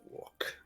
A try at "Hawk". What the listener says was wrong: It's not walk. It's hawk. You said no. It's not. It's hawk. Hawk.